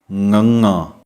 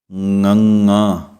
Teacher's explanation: ਜਿਵੇਂ ਹੀ ਗਲੇ ਵਿੱਚੋਂ ਆਵਾਜ਼ ਆਵੇਗੀ ਨੱਕ ਦੇ ਰਾਹੀਂ ਉਸੇ ਤਰ੍ਹਾਂ ਹੀ ਆਵਾਜ਼ ਨਿਕਲਦੀ ਹੈ ਨਾਲ ਹੀ। ਕਹਿਣ ਦਾ ਭਾਵ ਗਲੇ ਅਤੇ ਨੱਕ ਤੋਂ ਆਵਾਜ਼ ਇਹਨਾਂ ਦੋਵਾਂ ਦੀ ਨਿਕਲੇਗੀ ਤਾਂ ਇਸ ਸ਼ਬਦ ਦਾ ਉਚਾਰਨ ਹੋਵੇਗਾ।